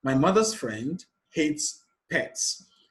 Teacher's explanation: the stressed word here is friend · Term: emphatic stress